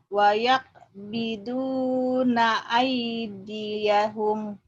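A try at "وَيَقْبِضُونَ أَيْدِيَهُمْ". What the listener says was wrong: wa yaqbiduna aydiyahum. Ya kurang cepat itu ai-nya. Yang benar yang tadi. Wayak, ini kolah ya. Wayak biduna aydiyahum.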